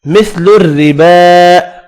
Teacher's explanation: را باریک پڑھنی ہے زیر کی وجہ سے، کھڑی زبر یہاں بھی ایک الف کی مقدار میں کھینچ کر پڑھیں گے.